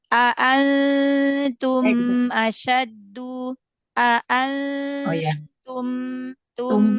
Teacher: He jadiin jangan memantul ya karena dia punya sifat ee rakhawah jadi dialirkan suaranya ya. Ee mim sukun izhar syafawi itu diselesaikan ya jangan buru-buru